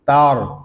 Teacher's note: تا را زبر تار، یہاں پہ تا باریک ہے اور را کو پر پڑھیں گے کیونکہ را ساکن سے پہلے زبر آ گیا ہے۔